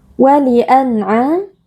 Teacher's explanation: nun sukun kita baca dengan izhar atau dengan jelas tanpa berdengung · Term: izhar halqi